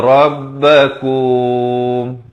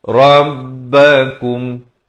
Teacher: idhar syafawi diwaqafkan dengan jelas, jangan dipanjangkan